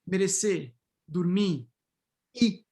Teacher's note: In BP, you also have this word final R deletion, right? Particularly in the infinitive verb forms.